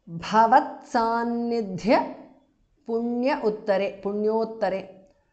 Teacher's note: Bha and dha are mahapranah.